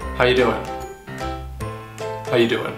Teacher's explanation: the most reduced form of this greeting would be to eliminate the word are altogether.